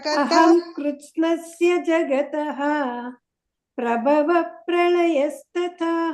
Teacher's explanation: ಜಗತ್ತಃ ಅಂತ ಹೇಳಿ ಮತ್ತೆ ಜಗತ್ತಃ ಅನ್ಬಾರ್ದು. ಕೊನೆಯಲ್ಲಿ ಇದು ವಿಸರ್ಗ ಬಂದಿದ್ರೆ ತಹ ಅಂತಾನೆ ಪೂರ್ತಿ ಹೇಳ್ಬೇಕು.